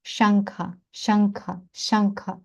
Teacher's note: задньоязиковий н так як в слові Ганга так само тут шанка шанка шанка він утворюється як така смичка